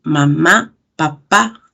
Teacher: Estos fonemas que se producen es cuando se unen nuestros labios. Aquí vemos que mi labio superior se une al inferior. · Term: bilabiales